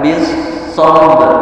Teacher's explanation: Ba sukun termasuk salah satu huruf qalqalah, ya, huruf qalqalah yang harus betul-betul dipantulkan.